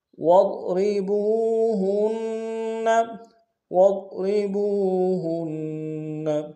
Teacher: واو کو ضاد کے سامنے آئیں گے، ضاد کو موٹا ادا کریں گے، را کو باریک ادا کریں گے ، با کو واو کے سامنے آنا، واو مدہ ایک انداز